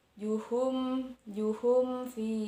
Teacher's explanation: Kemudian juhum fi, di sana ada mim sukun bertemu dengan huruf fa, disebut idhar syafawi, panjangnya 2 harokat atau 1 alif, dibaca jelas antara mim sukun dan huruf fa-nya